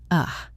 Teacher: It is the laziest sound in the language. It is an unstressed neutral sound, like a grunt. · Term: the schwa sound, schwa sound